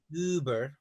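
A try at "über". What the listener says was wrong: it's not uber it's round your lips round your lips vertically look at me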